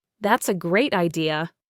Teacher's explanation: If I genuinely think your idea is good, I'll say that's a great idea. with a high falling tone.